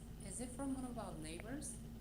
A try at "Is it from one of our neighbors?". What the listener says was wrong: One of our neighbors? R가 좀 더 굴러가는 발음이 좀 더 났으면 좋겠어요. Our neighbors?